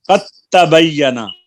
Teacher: دال کو تا میں ملا دیا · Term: ادغام